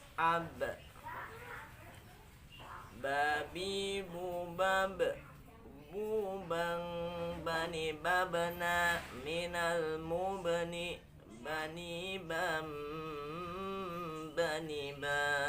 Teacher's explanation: Jadi ba ini keluar dari dua bibir eh dua bibir ya. Huruf ba keluar dari dua bibir.